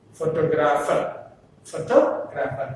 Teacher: If we add er to this word, the stress is on the second syllable from the beginning